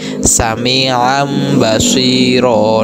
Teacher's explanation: Nah, di sini ada tanwin bertemu dengan ba, maka suara tanwinnya hilang dan dileburkan, dirubah menjadi bacaan mim sukun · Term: iqlab